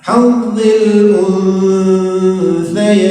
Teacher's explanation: ketika membaca nun-nya kita sudah pada posisi makhraj huruf ta posisi makhraj huruf ta ujung lidah dan ujung gigi atas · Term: ikhfa